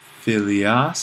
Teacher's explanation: it's a long alpha, but the accent stays on the iota